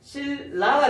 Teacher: 자, 신라 발음하면 신라가 되겠죠? 그 다음 니은이 뭘로 바뀌었습니까? 리을로 바뀌었으니까 리을은 유음. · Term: 유음화 현상